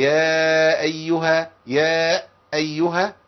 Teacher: بياتي بهمزه قبل المد بسبب انه قطع الصوت